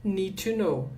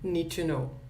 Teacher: Aqui na hora de pronunciar, gente, esse D não vai ser pronunciado. Então, a gente vai falar need to know.